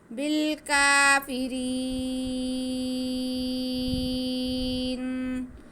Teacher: را کے نیچے زیر ہے، را باریک پڑا جائے گا، وقف ہم کھینچ کے کریں گے